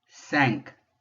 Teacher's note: And then notice there's another vowel with an N with no vowel behind it. So that IN in the middle is going to be nasal, coming out of my nose again. And that Q is going to be one of the few times we are going to pronounce at the end of the word.